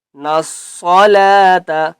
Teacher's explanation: الف اور لام کو ہم نے نہیں پڑھنا، نون کو ہم نے صاد کے ساتھ ملانا ہے۔ نصلاۃ، صاد کو بھی ہم نے پر کر کے پڑھنا ہے، ٹھیک ہے۔